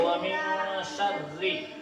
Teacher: اور را کے نیچے زیر ہے تو را کو کیسے کریں گے؟ باریک